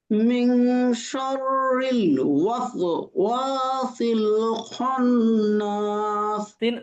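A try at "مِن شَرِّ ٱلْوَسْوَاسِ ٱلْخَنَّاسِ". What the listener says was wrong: সিনের উচ্চারণটা খেয়াল করেন। মিন শাররিল ওয়াস, এই যে ওয়াস সিন, হ্যাঁ। আপনার সিনটা সঠিক উচ্চারণ হচ্ছে ওয়াস ওয়া, এটা পাতলা হয়ে যাচ্ছে। ওয়াস সিন একটা এরকম হবে, বাতাস। বাচ্চারা দুষ্টামি করে এরকম করে।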